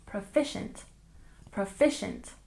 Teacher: And proficient, we stress the second syllable again.